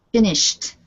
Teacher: either end with a t or a d so finish sh because it is unvoiced sh then you use T